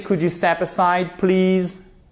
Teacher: Et vous remontez vers le haut. Pourquoi? Parce que c'est une yes-no question.